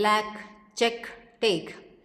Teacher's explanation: Inaudibly released when it occurs finally, as in lack, check, take.